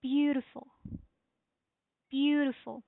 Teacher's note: we will raise the tone and the stress on the first syllable